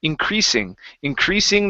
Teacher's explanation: instead of increasing with a z sound it's an unvoiced s